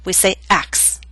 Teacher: For example, the word axe. We have 3 consonant sounds, k, t, s. These are voiceless sounds, and we drop the middle one, which happens to be a T.